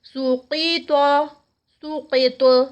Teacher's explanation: جب سقیط روکیں گے تو قاف پہ طا پہ قلقلہ آئے گا